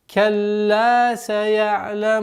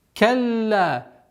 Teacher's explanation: После удвоения звука лям у нас долгота в размере 2 огласовок фатхи.